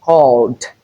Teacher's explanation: the ed here is realized as d because we have the l sound the liquid sound which is a voice sound before the ed. Hence we realize this as D and thus we are looking for the word with the D sound in all these.